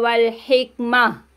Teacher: گولتا کو ہم ہاں بدل دیں گے، یہاں پہ رک جائیے گا